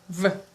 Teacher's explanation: Then we have V, also V, which is the labiodental sound